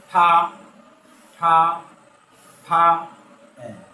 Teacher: নিচের ঠোঁটের পেট সামনের উপরে 2 দাঁতের আগার সাথে লাগাইয়া ফা, এবং 2 ঠোঁট গোল করিয়া সামান্য খোলা রাখিয়া ওয়াও, এবং 2 ঠোঁটের ভিজা জায়গা হইতে বা, এবং 2 ঠোঁটের শুকনো জায়গা হইতে মিম।